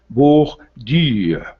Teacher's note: o U força o biquinho do francês, o arredondamento dos lábios